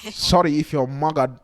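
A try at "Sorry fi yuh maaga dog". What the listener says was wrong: Why are you rolling your R's? So sorry, fi, maga, Dog. maga dog,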